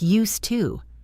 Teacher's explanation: We pronounce used to as used to. We drop the D sound and the to becomes a quick to. It sounds like used to.